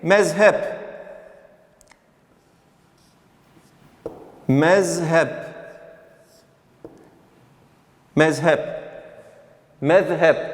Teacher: bunları biz Peltek Z şeklinde Türkçe okurken Peltek Z şeklinde değil de normal Z şeklinde okuyacağız